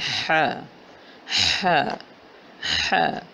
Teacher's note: تو ہم نے سیکھنا ہے ح ح ح، اور ح ہے حلق کے درمیانی حصے سے حلق نمبر 2 سے اوپر اور نیچے والے حلق کے حصے کے درمیان والے حصے سے وسط حلق سے ح کی ادائیگی ہوتی ہے